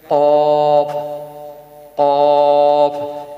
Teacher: قاف یہ گلے میں سے نکلے گا، گلے کے بالکل اوپر والے اینڈ والے حصے سے قاف نکلے گا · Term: موٹا قاف